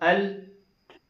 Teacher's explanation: जबान की करवट से नोक तक का हिस्सा दांतों के मसूड़ों के साथ लगा है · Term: लाम का मखरज